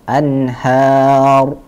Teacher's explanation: Rohnya tebal karena dia adalah roh hidup yang sebelumnya didahului oleh harokat fathah.